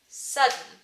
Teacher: Edith Skinner also calls this nasal plosion. So you plode your plosive, but you plode it nasally. It's also called a nasal release.